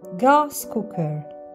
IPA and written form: ɡæs ˈkʊk.ər (gas cooker)